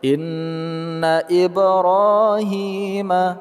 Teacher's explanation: nun bertasjid kita ghunnahkan atau kita dengungkan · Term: gunnahkan atau kita dengungkan